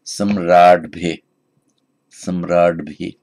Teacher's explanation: So just as it becomes samrat, so that d changes to a d, it has to be voiced before the endings beginning with b. So the instrumental plural of samraj goes from samraj, samrat, with the unvoiced t, but followed by the bhi or the bhya, the t changes to a d.